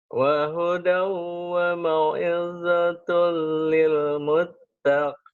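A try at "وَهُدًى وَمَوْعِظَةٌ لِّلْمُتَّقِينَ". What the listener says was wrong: Di sininya masih ketahan. Harusnya wahudau wa mau'izatul. Wahudau wa mau'izatul lil muttaqin. Coba wahudau.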